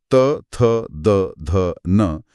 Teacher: जीभ दांतों से लगती है। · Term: त वर्ग